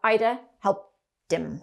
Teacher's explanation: the final sound of help attaches to the next vowel sound of the next word so it kind of like shifts over so we have ida